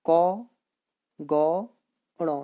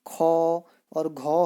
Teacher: क, ग, ण ये आपके अल्प प्राण हैं, इसमें कम वायु निकलती है। जबकि आप ख, और घौ है, इनको बोलने में अधिक समय भी लग रहा है थोड़ा, और वायु भी अधिक निकल रही है।